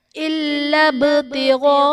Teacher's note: إِلَّا ابْتِغَاءَ، إِلَّا ابْتِغَاءَ میں با حرف قلقلہ ساکن ہے تو یہاں پر قلقلہ خوب ظاہر کریں گے